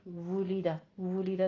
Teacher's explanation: दोनों होठों को गोल करके अदा कीजिए वाव की आवाज़। आगे यमूतु में वाव मत अदा करना है और ता पे भी दोनों होठों को गोल करना है।